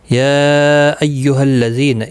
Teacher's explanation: یا مد منفصل ہے، 3 الف کی مقدار کے برابر کھینچ کر پڑھیں گے